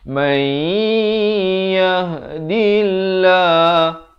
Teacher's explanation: Lafz jalalah ni dibaca nipis 2 harakat